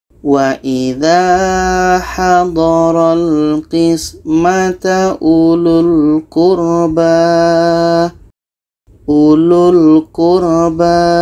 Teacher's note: Karena di sini pun ada tanda bulat lagi. Jadi u ini pendek, lu ini pendek, terus masuk ke lam. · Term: sifir mustadir